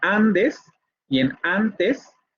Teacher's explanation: esa nasal va a ser dentalizada